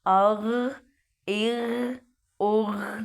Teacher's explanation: अब अग इग उग नहीं पढ़ेंगे, गैन पे कलकला नहीं करेंगे